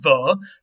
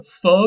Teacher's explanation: the voiced variant of f is v that's all it is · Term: voiced fricative